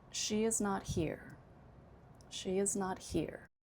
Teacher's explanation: Prominence is on here.